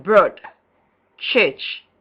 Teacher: central, half closed, tense, and unrounded